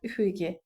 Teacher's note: İstisna bircə dənə bilmək lazımdır ki, üfuqi sözündə uzanma ola bilər. Üfüqi. Üfiqi sözündə üç sait uzana bilər.